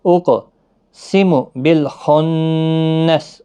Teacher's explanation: اقسم بالخنس خا حروف مستعلیہ کا حرف ہے، پر پڑھنا ہے، نون مشدد پر غنہ ہوگا اور سین ساکن ہو جائے گا وقف کی صورت میں